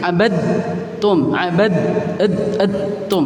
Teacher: idgham yang masuk ke huruf selanjutnya baik itu makhraj maupun sifatnya Jadi huruf yang pertama huruf Dal yang pertama ini hilang langsung masuk ke tak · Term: idgham Kamil